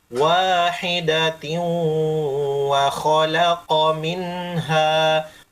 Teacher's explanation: baris dua ketemu waw ditahan kasih lama